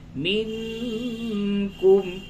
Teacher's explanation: نون ساکن کے بعد کاف اخفا ہوگا